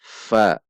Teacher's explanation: Bukan bertemunya dua bibir, namun bertemunya gigi seri atas bagian bawah dengan bibir bawah bagian dalam. Jadi bibir atas tidak ikut. Bukan dibaca pi, namun fi. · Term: huruf fa